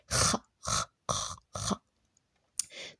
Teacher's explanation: son son est un peu rauque, comme quand tu racles ta gorge doucement